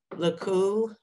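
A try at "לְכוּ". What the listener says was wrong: Lechu. It's a cha.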